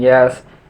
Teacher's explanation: The front of the tongue articulates with the down part of the hard palate. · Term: Palatal